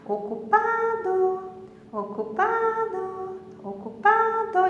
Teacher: Então, o pá é o mais forte. Ó, percebam que a penúltima sílaba, o do é a última, penúltima, tá? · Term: sílaba tônica